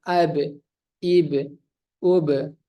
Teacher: Kemudian idlaq, huruf keluar cepat. Qalqalah, huruf ba ini huruf dipantulkan.